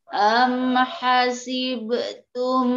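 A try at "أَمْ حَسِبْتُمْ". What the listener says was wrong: qalqalah jangan bu hasibtum jangan hasib be saja bu.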